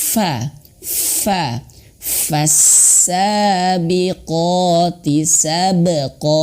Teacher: Huruf fa itu di sini bibirnya ya. Fa itu bibir bawah, perut bibir bawah sini menyentuh ujung gigi seri atas dan mengeluarkan angin.